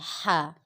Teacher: ہا الف حروف حلقیہ، یہ حلق کے درمیان والے حصے سے ادا ہوگا اور اس میں یہ ہا کی آواز نکلے گی.